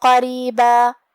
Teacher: عذابا قریبا، جو کہ کلمت قریبا میں حرف الرا کے نیچے زیر ہے تو را کا حکم ہوا ترقیق، ہم حرف الرا کو ہلکی آواز میں پڑھیں گے